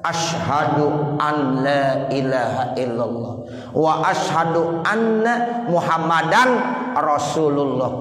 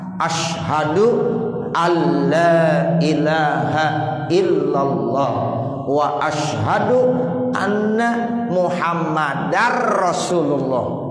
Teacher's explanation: Jadi nggak ada suara nun lagi, udah langsung ke lam. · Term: idgham bila gunnah